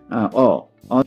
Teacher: যখন বলছি ঠোঁটটা বেশ খোলে, কাজেই ঠোঁটটা বেশি খোলে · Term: অস্বরধ্বনি